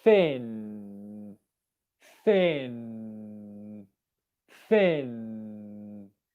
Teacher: Him, him. For the N, tip of tongue comes to the alveolar ridge, same as for the T or D position. But this time we go to the position, we hold it there, and the airflow comes out the nose.